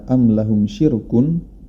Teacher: dibaca tipis karena didahului oleh huruf yang berharakat kasrah yakni huruf syin berkasrah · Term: ro tipis